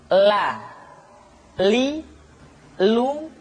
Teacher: diucapkan dengan mengangkat ujung lidah kita dengan disentuhkan dengan langit-langit di depan